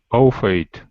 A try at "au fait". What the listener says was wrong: Yeah, au fait. I think the T is not pronounced. It's au fait, I believe.